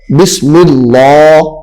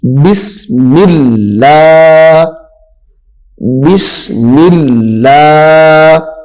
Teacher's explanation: اس کو صحیح طریقے سے پڑھنا لام کو باریک کر کے. بسم اللہ بسم اللہ.